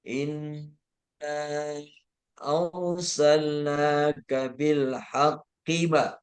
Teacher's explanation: Arsalnaka kaknya pendek, bil haqqi ki-nya pendek juga. Jadi langsung nyambung ke ke huruf berikutnya.